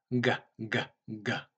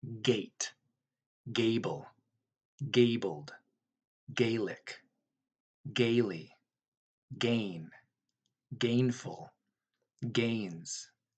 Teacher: G letter G gah gah gah like the K you're gonna lift the back of the tongue up and stop that airflow coming out the mouth or the nose just for a little bit and then it let it pop out explode the trick between the K and G is the voice it's · a little bit and then it let it pop out explode the trick between the K and G is the voice it's okay it's very breathy like a whisper the G uh is gonna have that voice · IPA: /G/